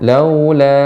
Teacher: karena bertemu dengan hamzah maka dibaca dengan panjang, dibaca dengan mad wajib, mad jaiz munfasil.